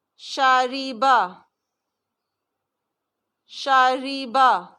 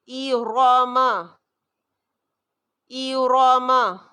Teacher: شاریبا، شاریبا را باریک ہے. ایراما، ایراما را موٹا ہے. یہ ہے فرق.